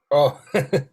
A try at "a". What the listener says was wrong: not O.